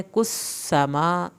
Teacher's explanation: कुस समा, सीन की शद भी पढ़नी है और सीन को सीटी के आवाज़ के साथ पढ़ा जाएगा